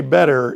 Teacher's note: when they say better, it sounds just like it's spelled with a D, but it's not.